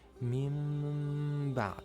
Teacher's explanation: So here we have the noon second and then it's followed by letter ba. You turn that noon into meem. And you add ghunnah for two beats.